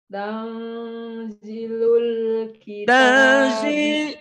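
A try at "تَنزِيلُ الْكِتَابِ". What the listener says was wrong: Panjang dulu matobi'i.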